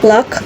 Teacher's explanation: made by air flowing along the sides of the tongue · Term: lateral approximant